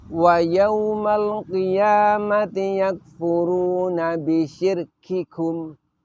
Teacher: Nah, perhatikan pada lafaz bisyirkikum. Ketika kita mengucapkan lafaz bisyirkikum dengan kita terlalu menampakkan hamesnya, maka di situ siddahnya itu menjadi hilang.